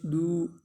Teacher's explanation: دال واو پیش دو، واو مدہ ہے تو اس کو ایک الف کے برابر لمبا کریں گے